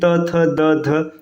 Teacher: इसमें ना आपका जीभ जो है आपके दांत को टच करेगा, ठीक। जैसे देखिए त थ द, है ना, अब जब इन सबको बोलेंगे त थ द ध, है ना, तो ये आपके दांत को टच करेगा, इसलिए इसको दंत व्यंजन कहा जाता है।